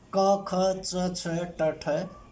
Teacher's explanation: जिन ध्वनियों के उच्चारण में कंपन की मात्रा सहज रहती है, बहुत कम होती है, वो ध्वनि कहलाती हैं अघोष